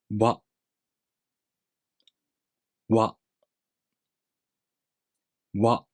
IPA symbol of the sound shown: ɰa